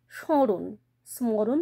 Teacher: স এর মাথায় একটা অনুস্বার লাগিয়ে দিচ্ছে কারণ নেজাল টোন আসছে এখানে কিন্তু ম টা উচ্চারিত হচ্ছে না